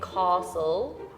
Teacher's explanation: But in the south, they would say castle and kind of add an R sound.